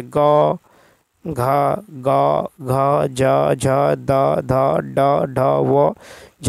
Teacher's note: ध्वनि की दृष्टि से जिन व्यंजनों के उच्चारण में स्वर तंत्रिका झंकृत होती हैं उन्हें घोष ध्वनि कहते हैं